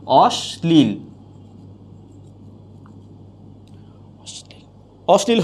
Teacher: অর্থাৎ তালুবর্ষের উচ্চারণ দন্তস হয়ে যাচ্ছে